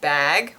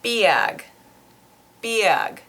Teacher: The typical example of it, and you'll hear this really, really strongly from some speakers and not at all from other speakers, so it's kind of interesting, is the word bag. We'll just say bag with the ah, normal ah sound, but someone from one of those cities will say biag, biag. So it's a completely different sound, and it's almost like it's 2 syllables long, biag. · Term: Northern Cities Vowel Shift